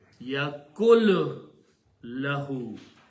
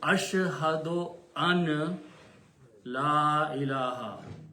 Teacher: If the word after that is lahu, then the sound of noon completely goes away. And lam should be pronounced twice. So it is yakun plus lahu is yakul lahu.